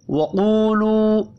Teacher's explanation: 2 واو مدہ ہے، دونوں کو 1 1 الف کے برابر کھینچ کر پڑھنا ہے۔ قاف حروف مستعلیہ ہے، پر پڑھیں گے۔